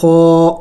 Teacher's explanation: خو موٹے حروف میں سے ہے اور حروف حلقے میں سے ہے اور حلقے اگلے حصے سے ادا ہوتا ہے